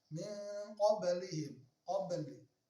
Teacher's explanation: ba merupakan huruf qalqalah tapi disebut dengan qalqalah sughra atau qalqalah yang tipis